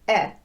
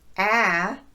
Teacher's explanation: the short e sound is also slightly shorter in duration than the short a sound this is because there's more movement on that a sound so